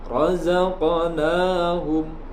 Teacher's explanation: qaf wajib dipantulkan, namun pantulannya sedikit. Di sini disebut dengan qalqalah sughra karena terdapat huruf qalqalah berharakat sukun dan berada pada tengah-tengah kalimat.